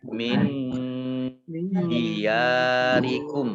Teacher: Nun sukun bertemu dengan huruf dal, bacaan ikhfa. Dibaca samar-samar.